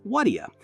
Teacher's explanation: When natives say what do you quickly, they tend to join the three words into one, eliminating the pauses and making the pronunciation more fluid, it's as if they were mashing the words, transforming them into a new sound form. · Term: linked speech